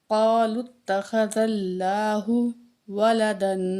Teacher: اللہ کے لام سے پہلے زبر ہے، تو اللہ کو ہم موٹا کر کے پڑھیں گے